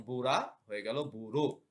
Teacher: পূর্ববর্তী ও ধ্বনির প্রভাবে আধ্বনি ও হয়ে যায় যেমন বুড়া হয়ে গেল বুড়ো অর্থাৎ রস্যু এর প্রভাবে আ এর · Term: প্রগত স্বরসঙ্গতি